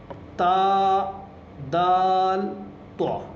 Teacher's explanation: تا، دال، تو، یہ 3 ورڈ جو ہیں وہ سیم جگہ سے ادا ہوتے ہیں، یعنی زبان کی نوک اور اوپر کے دانتوں کی جڑ